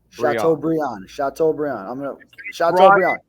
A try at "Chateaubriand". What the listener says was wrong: Instead of Brian, it's pronounced Briand. so Chateaubriand. House Brian, Chateaubriand.